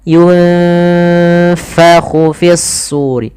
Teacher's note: Hati-hati jangan dibaca yungpahu, jangan pakai p, tapi dia f.